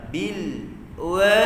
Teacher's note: Jangan diqalqalahkan lam, jangan didengungkan. Kemudian infitah pula lam tu, terbuka mulut kita bila sebut lam